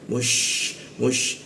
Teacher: sya di tengah lidah